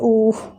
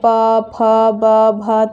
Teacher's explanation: ये ऐसे वर्ण हैं जिनका उच्चारण करने में हमारे होठों पे ज़्यादा बल पड़ता है, हमारे लिप्स मूव करते हैं। जैसे देखिए ऊ, देखिए होठ हमारा ऐसे हो गया ऊ। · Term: ओष्ठ वर्ण